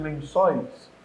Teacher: o O é forte, presente, o I sai fraquinho.